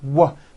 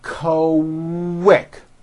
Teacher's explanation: Q sounds are made with the K sound, k, k, and the W sound, w, put together.